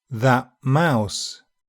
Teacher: if the next sound is BILABIAL, the /t/ becomes an unreleased /p/ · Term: assimilation